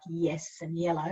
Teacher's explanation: in words like yes and yellow you say a little e first